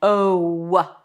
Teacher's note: In the O as in go, there is a W at the end.